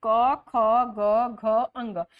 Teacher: क, ख, ग, घ, अंग, ये जो है हमारे कंठ से आता है। क इसमें जरा सा कंठ हमारा स्पर्श करता है, इसीलिए इसको स्पर्श बोलते हैं।